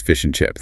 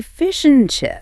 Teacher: Fish and chips. The D is gone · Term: illision